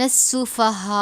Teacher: بڑی مد ہے، 5 الف کے برابر کھینچ کر پڑھیں گے